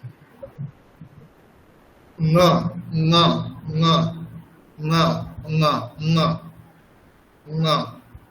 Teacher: একদম কণ্ঠ থেকে হবে, তার সাথে নাসিকা